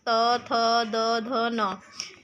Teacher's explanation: दंतस्य जो हमारे दांतों को टच करती है